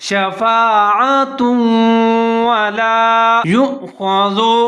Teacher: ہے، فا زبر الف فا، شفا، عین کے اوپر زبر ہے، تا کے اوپر دو پیش ہے، آگے واو مشدد ہے اور اس کے اوپر زبر ہے تو تا اور واو دونوں ملا کے پڑھیں گے، غنہ کریں گے ، ادغام کریں گے، شفاعۃ ولا یؤخذ، اب یہاں پر یا